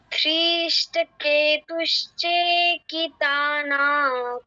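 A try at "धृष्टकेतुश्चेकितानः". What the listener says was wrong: ধৃষ্টকেতুশ্চেকিতানক। ধৃতে কেন দীর্ঘ করছো? নতে কেন দীর্ঘ করছো? এখানে কি দীর্ঘস্বর আছে? ধৃষ্ট কেতু শুধু কেতে দীর্ঘ, চেতে দীর্ঘ, তাতে দীর্ঘ। তুমি ধৃতে দীর্ঘ করবে না। ধৃতে দীর্ঘ করবে না, নতে দীর্ঘ করবে না। ধৃষ্টকেতুশ্চেকিতানখ, এরকম।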